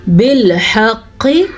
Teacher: حا کے تلفظ کا دھیان رکھنا ہے, قاف کو موٹا پڑھنا ہے اور قاف پہ کسی حد تک جھٹکے کی کیفیت بھی پیدا ہو رہی ہے